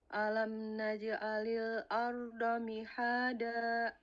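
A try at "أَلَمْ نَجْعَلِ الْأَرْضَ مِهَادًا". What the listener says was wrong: nah hati-hati ain jangan seperti hamzah ya apa yang membedakan ain dengan hamzah selain memang sifatnya ada yang beda ya nah makhraj beda kalau ain itu di tengah tenggorokan ya satu tempatnya dengan ha ain itu a ha sama-sama di tengah-tengah kalau hamzah itu ada di pangkal tenggorokan tenggorokan paling bawah A, I, U. Nah, jadi jangan alam naj'alil, jadi hamzah nanti. Alam naj'alil ardo.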